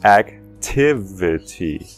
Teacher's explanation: Tiv é a sílaba enfatizada. Tiv, T-I-V.